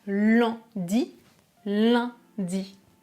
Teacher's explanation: on prononcera ce mot en utilisant la troisième voyelle nasale